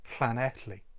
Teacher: Like I say, you're not trying to form a proper letter with that first part of the word of the letter. You're trying to just to exhale air through the side of your cheeks with your tongue at the roof of your mouth